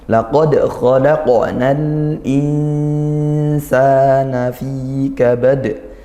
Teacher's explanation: fi juga mad tabi'i panjang satu alif atau dua harakat